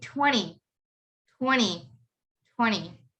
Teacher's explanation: 30 40 but for this one 20 has a n uh there's a t after the n so you don't pronounce the t you would just say 20